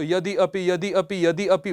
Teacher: विद्यार्थियों, यहां पर कुछ उदाहरण भी दिए हुए हैं, जैसे देखिएगा यदि अपि, अब यदि में जो ई है और अपि अ है, आप इसको यदि अपि यदि अपि यदि अपि बार बार बोलेंगे तो ई और अ दोनों मिलकर के य सुनाई पड़ने लग जाएगा और बन जाएगा यद्यपि। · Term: अर्धस्वर